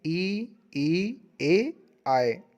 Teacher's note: उच्चारण में जीभ का जो अग्रभाग काम करता है उसे हम अग्रस्वर कहते हैं